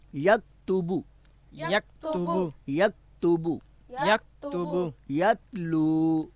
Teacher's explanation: آواز کو ابھارے نہیں، کیونکہ تا حرف جو دو نقطوں والا ہے اس کو ابھار کر نہیں پڑھنا